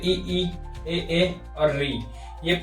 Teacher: जिनका उच्चारण जीवा के अग्र भाग से होता है उन्हें अग्र स्वर कहा जाता है